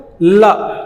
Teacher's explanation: पहले जीभ ऐसे पटकाएगा और अगल बगल से हवा निकल जाएगी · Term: पार्श्विक